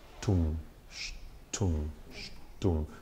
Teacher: So you're dwelling a little more on the sh